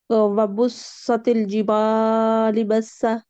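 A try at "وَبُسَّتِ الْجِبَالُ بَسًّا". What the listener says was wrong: जिबाली नहीं है, जिबालू.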